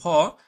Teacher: মানে ভ তো দেখো, ভ হচ্ছে প বর্গে পড়ছে, এটা হচ্ছে এই যে ভ, এটা ঘোষ এবং মহাপ্রাণে আসবে। তাহলে এটা হবে ভ, ঘোষ বর্ণ এবং মহাপ্রাণ